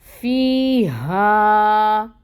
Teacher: जो हा है ये अक्सउल हल्क से अदा होगी और ये अलिफ साकिन है, इससे पहले फ़तह की हरकत है, ये भी 2 काउंट्स पढ़ा जाएगा।